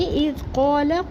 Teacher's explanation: قاف کو پر پڑھیں گے، قاف کے اوپر زبر، اس کے بعد الف مدہ کو ایک الف برابر پڑھیں گے